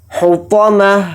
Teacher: حطمہ یعنی تو کو یہاں پر موٹا پڑھیں گے پر, پھر تا کو یہاں پر ہائے ساکنہ بنا دیں گے, یعنی ہا کی آواز اس میں نکالیں گے ساکن کے ساتھ